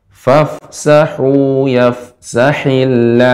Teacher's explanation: h-nya lebih lebih mengalir lagi ibu dia tengah tenggorokan